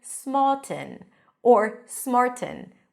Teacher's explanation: you can say it with popping the T, like you would in British English